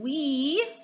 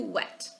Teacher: So now we're going to do the short E, et, wet. So it went from we, long E, to wet, short